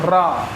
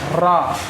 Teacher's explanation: तो रा जब बोलते हैं तो जीभ में कंपन सा होगा, तो ये जो रा हो जाएगा ये लुंठित या प्रकंपित व्यंजन हो जाएगा।